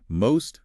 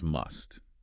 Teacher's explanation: With most and must, it's a subtle vowel difference. Most has a longer O sound.